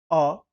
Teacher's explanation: जैसे अ मुंह गोल नहीं हुआ, अवृत्तमुखी है।